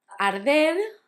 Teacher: Arder had the difficulty of the R's, that's soft, because it's between a vowel and a consonant